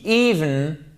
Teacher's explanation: accent tonique sur la première syllabe, vous l'avez compris, c'est un i long